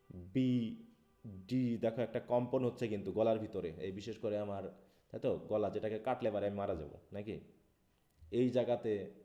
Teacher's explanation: produced when the vocal cords are together and when air flows through these they cause the vocal cords to vibrate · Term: voice sounds